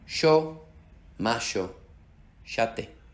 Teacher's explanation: Y sh es el sonido que se escucha al sur de Latinoamérica, en Argentina y en Uruguay.